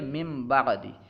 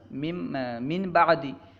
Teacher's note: نون ساکن کے بعد حرف با آیا، جس کی وجہ سے نون ساکن کو میم سے بدل دیا گیا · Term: اقلاب